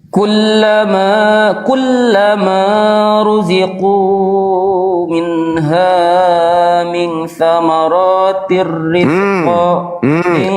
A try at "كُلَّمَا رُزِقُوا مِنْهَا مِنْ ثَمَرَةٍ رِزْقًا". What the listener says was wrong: Ra tidak panjang. Ti ra tanwin. Di situ ada kasratain. Ra tidak panjang adik.